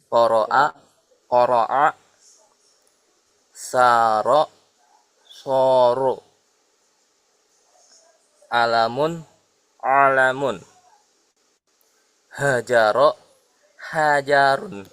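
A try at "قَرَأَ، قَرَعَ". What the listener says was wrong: Untuk yang hamzah dengan ain yang pertama tadi kurang kurang begitu jelas. Kalau a itu harus di bawah di sini a dengan tegas. Tapi kalau ain dia sedikit lebih lembut.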